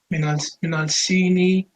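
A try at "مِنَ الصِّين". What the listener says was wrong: Don't pronounce the lam, akhi, because the sad is a sun letter.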